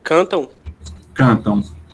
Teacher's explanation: são dois ditongos chamados ditongos decrescentes nasais decrescente porque ele vai dar vogal para semivogal